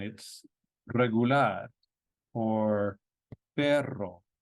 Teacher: the beginning of a word or a double r it's a trilled sound